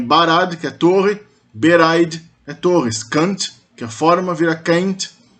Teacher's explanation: Os plurais, ao contrário do que acontece no Quenya, são feitos por um metavocalismo interno, ou seja, um ablaut, uma mutação vocálica dentro da raiz da palavra, não por um sufixo